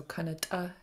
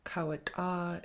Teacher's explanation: sound at the end but now it's long and high so Kanata is short and high kawata is long and high